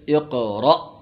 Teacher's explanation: عربی میں حمزہ میں جھٹکا لگ کے نکلتا ہے